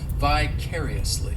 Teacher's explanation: the fourth syllable has the schwa